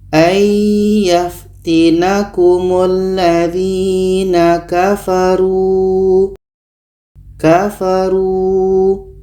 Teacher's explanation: hanya panjang dua harokat saja. · Kalau kita berhenti maka mat jaiz munfasil tidak berlaku lagi. Kita hanya baca panjang dua harokat sebab panjang waw mati atau mat asli atau mat tabi'i.